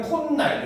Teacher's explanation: 코날이 콧날이 됐으니까 니은이 첨가됐잖아요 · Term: 니은 첨가